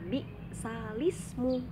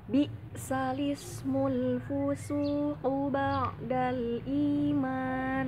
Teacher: Di contoh di situ tulisannya bi'sal ismu, tapi harokat hamzahnya itu dipindahkan ke huruf sebelumnya, sehingga cara bacanya bukan bi'sal ismu lagi, tetapi menjadi bi'salis, nyambung, bi'salismu ya. Tolong diperhatikan, bi'salismu, tidak bisa menjadi bi'sal ismu, bukan, tapi bi'salismu. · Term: naql